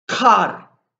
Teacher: make sure we're making it in the very back of our mouths, that we're making a uvular plosive. So remember, our uvula is making a stop and releasing air. · So remember, our uvula is making a stop and releasing air. We're also making a very small uvular trill